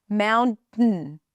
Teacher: there is an N before the T, so you bring the tongue up for the N, and then you just stay there until the end of the word.